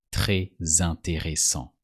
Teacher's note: With very, that is très, the S is usually silent, but you have to pronounce it when the following word starts with a vowel.